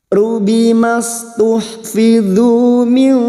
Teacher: Kita samarkan bunyi nun sukun dan mendengung selama 2 atau 3 harakat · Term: ikhfa hakiki